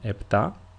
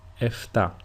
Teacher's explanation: The first one is with a P sound, like I pronounced it, επτά, and the second way is with an F sound, or a phi if you are Greek, that is εφτά.